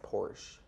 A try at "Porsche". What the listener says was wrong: No, it's two syllables, Porsche.